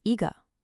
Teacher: when it comes before a fourth tone character like g, it changes to a second rising tone y. So, it becomes ega. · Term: tone change